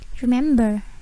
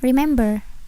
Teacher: Tidak ada R, tidak ada bunyi R sama sekali.